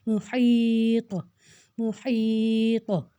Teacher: تو کے اوپر جزم ہے, تو ہم تو کو ہلا کر پڑھیں گے, مطلب دوبارہ سے ہمیں تو کی آواز آئے گی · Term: حروف قلقلہ